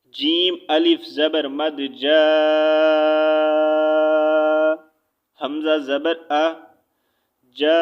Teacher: جیم الف زبر مد جا، حمزہ زبر آ، جا، حمزہ اسی کلمے میں ہے تو ہم نے اس کو 4 الف کے برابر جو ہے کھینچ کر پڑھا ہے، ٹھیک ہے۔ 4 الف کے برابر اس کو جو ہے ہم نے کھینچ کر پڑھا ہے۔ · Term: مد متصل